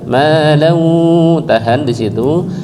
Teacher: Malan tanwin ketemu dengan wawu dibaca idgham bi gunnah, tahan sebentar.